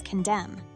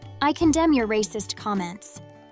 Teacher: The ending “n” is silent.